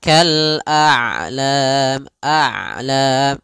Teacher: Ain itu kedua-duanya tidak terlalu dialirkan, tidak terlalu ditahan suaranya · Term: sifat bainiyah, sifat bainiah